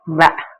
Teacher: பாருங்க சொல்லி பாருங்க வ மேல் பல்லும் கீழுதரும் வ இணைய வகாரம் பிறக்கும் மேற்பல்லானது கீழிதலை பொருந்த வகாரம் பிறக்கும்